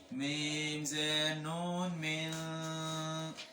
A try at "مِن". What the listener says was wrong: ये नहीं, ये मोटा पार्ट है। मोटा क्यों पढ़ रहे हो? म्यू गोल मोल ही कहना, मीन